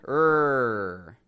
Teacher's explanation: We bring the blades of the tongue, the sides of the tongue, to the roof of the mouth, and we tense it back there, and it sounds like rrr. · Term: R sound